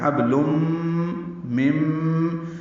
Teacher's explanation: حبلم مم، دونوں میں ادغام ہے، ادغام ناقص مع الغنہ، آواز ناک کے بعد سے یعنی خیشوم میں لے جا کر 2 حرکات تک